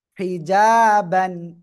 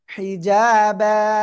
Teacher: এক জবর বাদ দিয়ে একালিফ টেনে পড়তে হবে।